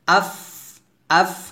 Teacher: আফে আফু বলা যাবে না কারণ ফা কিন্তু কলকল হরফ না